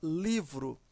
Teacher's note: a sílaba mais forte é li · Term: sílaba tônica